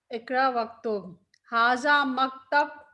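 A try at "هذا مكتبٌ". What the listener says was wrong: मकतब, आखिरी हरकत भी पढ़े।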